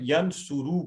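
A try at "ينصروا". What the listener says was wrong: آخری حرف پہ حرکت ہے نا, اس کو بھی پڑھنا ہے تاکہ یہ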